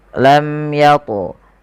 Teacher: Lam yatu, mim mati bertemu ya, dibaca dengan jelas suara mimnya tanpa ada penahanan dari bunyi mimnya. Tidak dibaca lam tapi langsung saja lam yatmishun. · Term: idhar syafawi